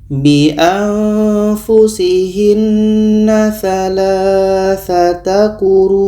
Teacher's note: Mat wajib mutasil ketika berhenti masih kita baca 4 sehingga 5 harokat.